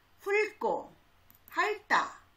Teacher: 리을과 티읕 중에는 리을이 소리가 나고요. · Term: 자음군 단순화